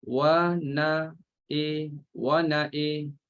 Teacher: Bagi Syatibiyah dibaca imalahkan huruf hamzah. Huruf hamzah diimalahkan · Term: imalahkan hamzah saja